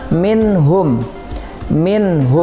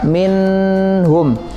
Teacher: ketiga dari izhar halqi disini adalah Minho Minho me Nah disitu ada nun sukun kemudian diikuti dengan huruf H setelahnya dan ingat cara bacanya dibaca jelas tidak boleh didengungkan